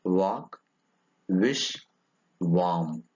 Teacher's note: It is a voiced bilabial glide.